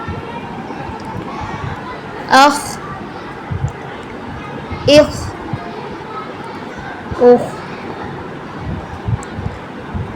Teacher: تفخیم کریں گے، خا کو پر کر کے منہ کو گول کر کے پڑھیں گے